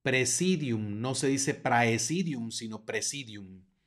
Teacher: tenemos otro diptongo ae que suena como e